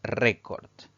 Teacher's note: la mayor intensidad la mayor fuerza de voz recae en la penúltima sílaba contando derecha izquierda es una palabra grave y vamos a colocarle